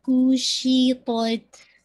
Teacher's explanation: شین میں آپ کی زبان پھیلے گی، ایئر بھی بلو ہوگی